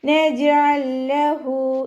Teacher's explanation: ജീം കൽക്കലയുടെ letter ആണ് അപ്പോ നമ്മൾ സുക്കൂൻ ആകുമ്പോൾ ഫുൾ സുക്കൂൻ കൊടുത്തിട്ട് ഉച്ചരിക്കുക